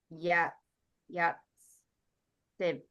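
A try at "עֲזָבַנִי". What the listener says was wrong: Yeah, but it's an ayin and not a y sound, so it's azavani.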